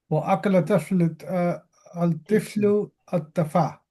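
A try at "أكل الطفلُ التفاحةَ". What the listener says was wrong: Tufahata. You gotta pronounce every vowel. But it's at-tufaha right here. At-tufaha. Tufaha. At-tufahata. So akala tiflu at-tufahata.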